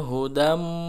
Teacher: Idgham Bighunnah tanwin bertemu mim ditahan Kurang lebih 3 harokat